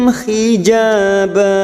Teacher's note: ja ba masing-masing dua harakat kita panjangkan ja fathah diikuti alif ba karena ada fathah tanwin yang dibaca